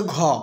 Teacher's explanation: উচ্চারণের সময় শ্বাসবায়ু বা প্রাণ বেশি পরিমাণে নির্গত হয় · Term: মহাপ্রাণ